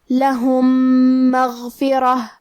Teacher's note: کلمت مغفرہ میں حرف الراء کو ہمیں موٹی آواز میں پڑھنا ہے، آخری میں تا پہ تنوین پیش ہے، پھر حرف الواو ہے۔ · کلمت مغفرہ، یہاں حکم ہے ادغام، تو ہم پہلے میم کو دوسرے میم میں ملا کے ایک ہی میم غنہ اور تشدید کے ساتھ پڑھیں گے۔